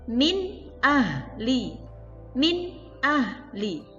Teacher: Cara membacanya jelas, tidak ada dengung, tidak ada samarnya. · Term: idhar halqi